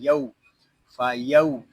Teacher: یہاں واو لین ہو رہا ہے، اس کو کھینچ کر نہیں پڑھیں گے، اس کو یو یا یو اس طرح نہیں پڑھیں گے، اس کو پڑھیں گے یو، فا یو۔